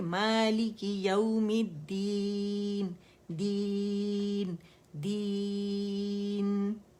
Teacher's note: نون پہ جائیں گے، وہاں ٹکیں گے اور نون کی آواز چلے گی 1 کاؤنٹ کے لیے